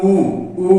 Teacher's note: और जब ऊ और ऊ बोलते हैं तो इसका उच्चारण आप देखेंगे ऊ, ऊ जब करते हैं तो मुंह होठों की सहायता से बोला जाता है, होठ गोलाकार आकृति में आ जाता है, इसीलिए इसे ओष्ठीय स्वर भी कहा जाता है। इसके अलावा जो यहाँ सारणी के माध्यम से देखेंगे, कंठ में और आ है, तालु में ई और ई है, मुर्दा में री, ओष्ठ में ऊ और ऊ।